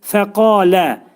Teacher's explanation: qaf hərfinin məxrəci dilin sonu və dilçəyin başlanğıcındadır.